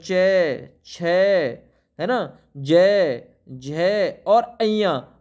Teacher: अया का उच्चारण स्थान तालू से होता है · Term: तालव्य